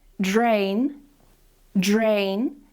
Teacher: Now let's move on to the pronunciation of D and R at the start of words, this is very similar to T and R but this time we're going to add some vibration here. So instead of saying CH we're going to say JR